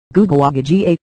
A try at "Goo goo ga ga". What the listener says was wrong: Not goo goo aga ga. Goo goo ga ga.